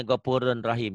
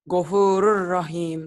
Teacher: Idgham bila guna tapi tidak disertai dengan dengung, hanya melebur saja.